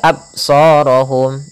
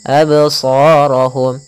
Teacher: pada lafal ba sukun, ini kita namakan dengan bacaan qalqalah. Apa itu qalqalah? Qalqalah yaitu memantul. Maka jangan dibaca absarahum, harus ada pantulannya, absarahum.